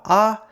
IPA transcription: aː